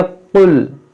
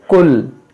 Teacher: इस काफ को थोड़ा नरमी से मोटा पढ़ा जाता है और उस डंडे वाले काफ को सख्ती से पढ़ा जाता है और बारीक पढ़ा जाता है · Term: नुक्ते वाले काफ